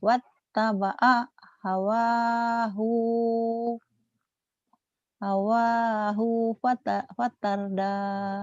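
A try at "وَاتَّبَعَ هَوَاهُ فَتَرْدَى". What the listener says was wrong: Ah, hu-nya pendek.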